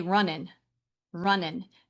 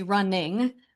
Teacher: They're losing that ng sound in their mouth.